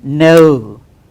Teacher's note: this is the diphthong that is inverted e and the short who sound